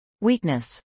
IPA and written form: ˈwiːknəs (weakness)